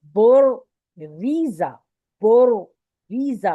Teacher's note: پہلا را موٹا ہے دوسرا را باریک ہے، اور پھر زاد جیسے نارمل آپ نے پڑھنا ہے ویسے پڑھنا ہے، ٹھیک ہے۔